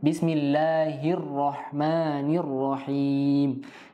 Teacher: Harus kita jelaskan tasydidnya bismillahirrahman, sebelum tasydidnya jangan panjang ya. Karena dia langsung masuk ke tasydid